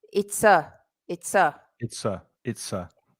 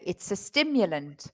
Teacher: when we put that in fast speech that ah is pronounced like a schwa